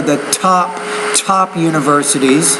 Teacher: You have to pronounce the T with more air.